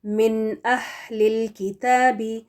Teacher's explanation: کیونکہ نون ساکن کے بعد جب حمزہ ہا، عین ہا، غین خا میں سے کوئی بھی حرف آتا ہے تو نون ساکن کو غنہ دیے بغیر کلیئرلی اس کو ادا کر کے آگے بڑھ جانا ہے. تو یہاں پر ہم من اہلی اس طرح سے نہیں پڑھیں گے، بلکہ نون کو پروناؤنس کر کے پھر آگے اگلا جو حمزہ ہے اس کو پڑھیں گے.